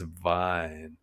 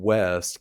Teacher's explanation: Probably the biggest challenge is the V versus the W sounds. Russian doesn't have the W sound, so wine comes out as vine and west comes out as vest. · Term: Russian accent